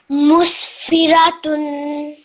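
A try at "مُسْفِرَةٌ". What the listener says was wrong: Musfiratun. Okay, don't stretch the fi out for too long because it only has a simple kasra underneath it. Okay, so the fi and the ra should be said for the same amount of time because the fa has a kasra and the ra has a fatha.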